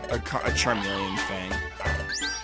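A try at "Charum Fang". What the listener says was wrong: I think it was Charum. Not Charmy.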